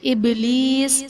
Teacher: ابلیس میں با حرف قلقلہ ساکن ہے تو یہاں پر قلقلہ خوب ظاہر کریں گے